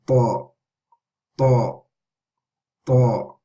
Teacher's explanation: This, you're touching the same places that the or the dal, but the difference is to make a heavy sound, and how we do that is by raising the front and the back of the tongue. Okay, so we're raising the front and the back of the tongue with ta